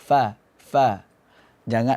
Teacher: Jadi gigi seri itu kita tabrakkan ke bagian perut bibir bawah yang basah. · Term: huruf fa